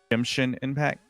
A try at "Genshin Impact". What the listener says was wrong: How? There's no M in that. It's like Genshin.